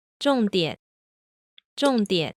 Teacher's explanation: the second syllable, that third tone, still starts lower than the end of the fourth tone. 重点，重点， Also notice that, again, we're hearing the half third tone here, not the full contour.